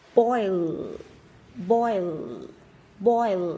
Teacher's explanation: Boil, boil, các bạn chú ý cái âm này khá là khó đọc, chúng ta đọc xong thì chúng ta phải cong cái lưỡi của mình lên, cái đầu lưỡi sẽ phải đặt ở chân của hàm răng trên